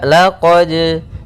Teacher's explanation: Pada bacaan laqad di sini ada hukum tajwid berupa qalqalah, yaitu suara dalnya.